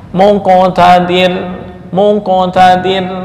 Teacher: Maka cara membaca qalqalah seolah-olah mengucapkan dommah itu lebih dekat.